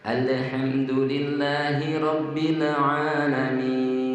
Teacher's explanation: Huruf lam yang seharusnya tidak kolkolah, tapi sering kita baca kolkolah.